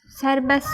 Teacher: Sonra sərbəst sözü sərbəs olaraq tələffüz olunacaq. T düşəcək.